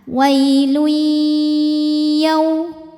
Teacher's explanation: Selanjutnya ada hukum idgham bi gunnah karena ada tanwin dhammah menghadapi huruf ya. Cara bacanya bunyi tanwin dimasukkan ke ya disertai bunyi dengung. Wailui, tahan.